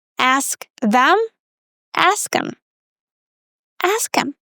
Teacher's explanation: Very often we reduce them to um so it's kind of like a schwa sound plus m.